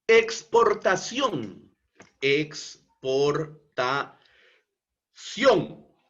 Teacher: Palabra aguda, porque la sílaba tónica se encuentra en la última sílaba, ción. Y como esta es una palabra que termina en la consonante N, entonces por eso es que es tildada.